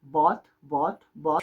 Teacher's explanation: en el americano vamos a empezar con una especie de a un poco cerrada